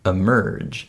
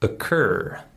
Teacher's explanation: The word occur starts with an O, but it's also the same schwa sound.